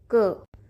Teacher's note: क वर्ग में पांच व्यंजन होते हैं और उनका उच्चारण कंठ से यानी कि गले से किया जाता है